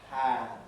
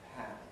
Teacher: the plosive is followed by a brief puff of breath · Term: aspiration